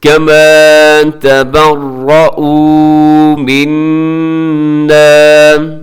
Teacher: یہاں نون مشدد ہے، یہاں پہ غنہ کیجیے گا اور اس کو لمبا بھی کیجیے گا کیونکہ اس کے ساتھ الف ہے